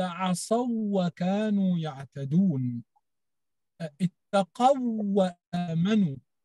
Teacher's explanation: صحيح أنه أدغمت الواو في الواو اللينة